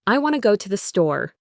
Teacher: The word to becomes to, which is just a T sound with a schwa. And want to very commonly gets squashed into wanna.